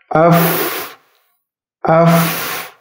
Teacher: huruf Fa sifat lainnya itu hams yaitu harus dikeluarkan nafas